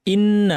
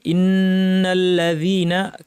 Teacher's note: ইন্না নুনের উপর তাসদিদ আছে, লম্বা গুন্না করতে হবে।